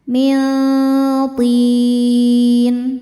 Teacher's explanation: bacanya nun disamarkan ke to kemudian dengungkan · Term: ikhfa hakiki aqrab